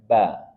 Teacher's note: ba dari dua bibir atas bawah dipertemukan dan dirapatkan ba dan dia juga termasuk huruf tipis jangan diberatkan ba tapi